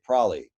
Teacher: some people will now even drop the b and just say prolly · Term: haplology